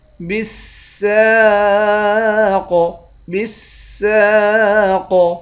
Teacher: قاف موٹے حرف میں سے بھی ہے اور قاف حرف قلقلہ میں سے بھی ہے، یہاں قلقلہ بھی کریں گے، موٹا بھی پڑھیں گے